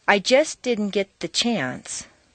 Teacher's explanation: because the ending St of just and the beginning D of didn't are so near each other in the mouth it's not worth the effort to start the sound all over again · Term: consonant consonant Liaisons